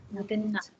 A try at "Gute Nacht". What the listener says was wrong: with Nacht we say Gute only, no N here. So Gute Nacht.